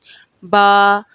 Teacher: حروف با دونوں ہونٹوں کو بند ہونے سے ادا ہوتا ہے